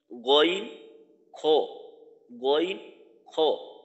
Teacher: এইটা হলো দুই নাম্বার মাখরাজ এরপরের মাখরাজটা হলো তিন নাম্বার মাখরাজ তিন নাম্বার মাখরাজটা হলো কণ্ঠনালী বা হলের শেষ হইতে উচ্চারিত হয়